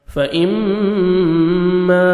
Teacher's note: فإما میم مشدد غنہ کریں گے. الف مدہ 1 سیکنڈ میم کو کھینچیں گے